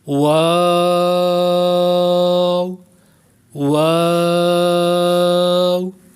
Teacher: واو پڑھیں گے تو ہونٹ گول ہو جائیں گے، ہونٹوں کی گولائی سے یہ ادا ہوتا ہے